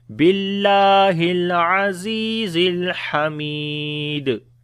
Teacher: Mi, again this is ya madda, and on the dal we make qalqala